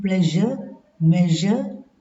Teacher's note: voiced palato-alveolar fricative